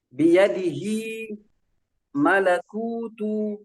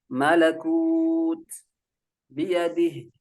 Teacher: Ada mad tabi'i yang dia terbaca ketika dia wasal, akan tetapi dia terbuang ketika waqaf. Ya, contoh misalnya biyadihi malakutu, itu terbaca mad tabi'i.